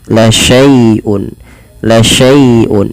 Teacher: dilembutkan karena dia ada ya sukun yang didahului dengan fathah, karena di sini bacaan lin, maka dia lembut.